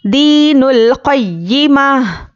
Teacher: तो गोलता पर जब वक्फ करेंगे तो वो हाय साकिना बन जाती है और हा की आवाज़ आनी है लास्ट में